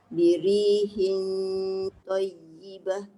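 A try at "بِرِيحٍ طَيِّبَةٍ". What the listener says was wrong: Angkat tak pangkal lidah. Birihin belah dalam. Dia jadi birihin. Dia tak terangkat pangkal lidah tu. Bunyi itulah dia dah tebal.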